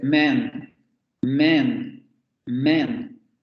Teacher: No es men, porque cuando decimos men es nuestra vocal E. Tiene que ser más abierta que nuestra E.